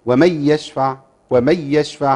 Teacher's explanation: له الادغام بغير غنه